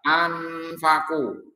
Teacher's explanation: Nun sukun bertemu fa adalah ikhfa, bacaan samar dengung